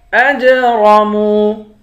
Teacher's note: حمزے کو جیم کے ساتھ ملا کر جیم پر قلقلہ کریں گے، جیم حروف قلقلہ میں سے ہے، را کو موٹا کریں گے، میم کو واو کے ساتھ ملا کر واو کو ایک الف کی مقدار کھینچ کر پڑھیں گے۔